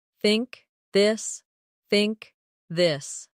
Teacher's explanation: In words like think or this. The tongue comes gently between the teeth. For think it's soft. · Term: th sound